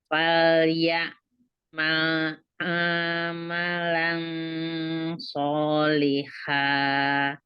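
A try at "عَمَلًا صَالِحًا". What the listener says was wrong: Oke, tapi amalan A-nya nggak panjang kan? Ya, tapi bacanya panjang. Bacanya dipanjangin dari amalan. Nggak boleh.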